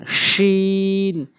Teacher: জিহ্বার মাঝখানের অংশটা উপরে তালুর সঙ্গে লাগাবেন।